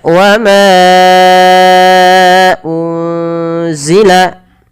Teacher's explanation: Huruf zai, maka nunnya disamarkan kepada huruf zai